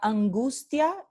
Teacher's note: Tenemos la consonante nasal, ¿ok? Y luego aquí tenemos la consonante oclusiva, G, no la aproximante, porque después de nasal nunca tenemos los alófonos aproximantes, nunca.